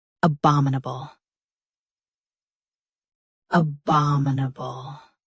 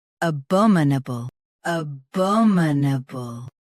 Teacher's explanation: US has ba. UK has bo. Watch that middle vowel.